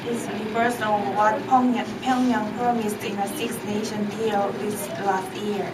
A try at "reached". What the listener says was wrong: Give me the CH sound. Reached.